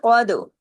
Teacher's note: قاف کو ہیوی کیونکہ 7 موٹے حروف میں ہے، دال پہ کلکلا کیونکہ دال جزم کے ساتھ ہے، اور کتب جد کا لیٹر ہے، قاد۔